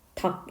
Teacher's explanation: 닭 이거 우리는 리을을 탈락시켜서 닭이라고 읽습니다. 자, 그런데 이렇게 닭이 단독으로 쓰이거나 아니면 닭과 이렇게 자음 앞에 쓰일 때는 무조건 하나가 탈락을 해야 돼요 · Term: 자음군 단순화, 자음 군 단순화